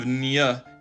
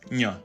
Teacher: it's actually pronouncing the N where you would pronounce a Y in English. So instead of ñ, it's ñ. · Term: palatal N